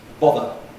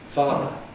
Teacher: they differ not only in quality but also in length